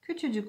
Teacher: Bu sefer düşen bir ünsüzdür. K ünsüzü düşmüştür. Buna da ünsüz düşmesi diyoruz.